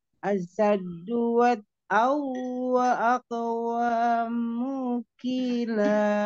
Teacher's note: Tanwin ketemu wawunya digunahin dulu.